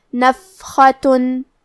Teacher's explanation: کلمت نفختن میں حرف الفا پہ جزم ہے، لہذا ہمیں فا کو ہمس سے پڑھنا ہے، اور ہمس کا معنی ہے حرف کی آواز ایسے کمزور ہو کہ اس میں پستی پائی جائے